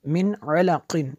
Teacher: میم نون زیر من، عین زبر ع، لام زبر لا، قاف دو زیر قن، من علق۔ یہاں پہ غنہ نہیں ہوگا کیونکہ نون ساکن کے بعد عین حروف حلقی میں سے ہے